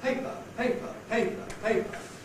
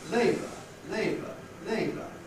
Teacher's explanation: Compare labor, labor, labor. Can you hear how the A in paper is said more quickly than the A in labor? Because the A in paper has the A clipped, because of the P that follows. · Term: clipping